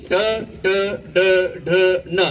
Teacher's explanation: ನಾಲಗೆ ನಾಲಗೆ ತುದಿಯನ್ನು ಸ್ವಲ್ಪ ಬೆಂಡ್ ಮಾಡಿ ಹೇಳಬೇಕು